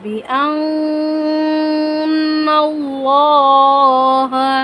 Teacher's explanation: نون مشدد ہے، نون مشدد پر غنہ پڑھیں گے اور اللہ والے لام سے پہلے زبر ہے، اللہ والے لام کو ہم پر پڑھیں گے. بِأَنَّ اللَّهَ یعنی موٹا کر کے پڑھیں گے.